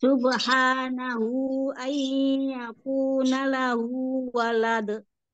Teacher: Yang dua harokat itu hanya pada kata lahu. Tapi di kata subhanahu, di situ empat atau lima harokat.